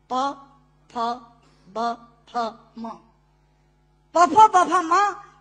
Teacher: दोनों होंठ मिलाकर बोले जा सकते हैं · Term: ओष्ठांग